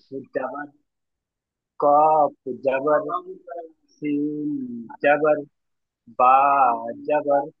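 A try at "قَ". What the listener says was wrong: দেখুন, আপনি তো জাবার পড়ছেন, কিন্তু অক্ষরটা কি উচ্চারণ হবে সেটা আপনি পড়লেন না। কাফ জাবার কা, আমি বললাম জাবারের আওয়াজ উপর দিকে হয় আর আকার লাগাতে হবে। দেখুন, জাবারের সঙ্গে যখন পড়তে গেলে আকার লাগাবেন, তাহলে কাফ জাবার কা, কয়াকারে কা।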